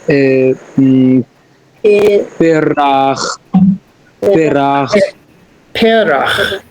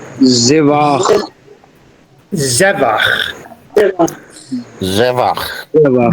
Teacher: everything is accented on the first syllable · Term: firm accent